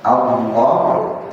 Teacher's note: Allah a-nya tipis lamnya yang tebal